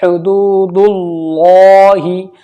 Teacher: اوپر پڑھا ہے ہم نے لفظ اللہ سے پہلے زبر یا پیش ہو تو اللہ کے لام کو پر پڑھیں گے، یعنی موٹا پڑھیں گے۔ اب یہاں پر پیش ہے تو یہ لام موٹا پڑھا جائے گا اللہ کا